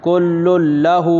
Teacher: ادغام کر دیں گے بلا غنہ کے، یہاں بھی ادغام تام ہوگا، یہاں بھی گناہ نہیں ہوگا. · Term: ادغام بلا غنہ